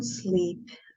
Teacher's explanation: Starting with a long E, that is a front sound, which means that the sound is articulated at the tip of the tongue, which is right here. And that is a close vowel. That means that the oral cavity when we articulate the sound is pretty narrow. That is a voiced sound as like the all other vowels.